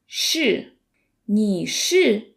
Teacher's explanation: how to pronounce the sh sound in Chinese. It's a retroflex sound.